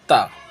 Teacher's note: ता ज़बान की नोक सामने ऊपर की दांतों की जड़ में लगती है तो निकलता है ता